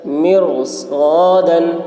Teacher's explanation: رائے ساکنہ کے بعد اسی کلمہ میں حروف مستعلیہ میں سے صاد آ رہا ہے اس لیے را کو پر پڑھیں گے۔